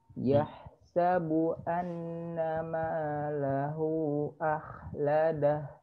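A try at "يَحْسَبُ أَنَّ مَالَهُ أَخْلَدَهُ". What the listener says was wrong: Lahu. Panjangin. Di situ ada coret panjang.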